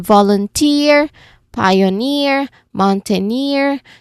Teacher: We stress on the final syllable, meaning we stress on the on the suffix itself.